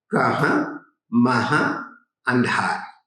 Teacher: आप देखें, इसकी पहली विशेषता है, यहाँ ब्रजभाषा में अकारण अनुनासिकता की प्रवृत्ति मिलती है।